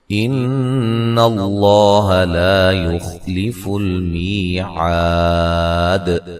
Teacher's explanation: نون مشدد پہ غنہ ضروری ہے، لفظ اللہ کو موٹا ادا کریں گے، اس سے پہلے حرف پر زبر ہے، لا الف مدہ ہے۔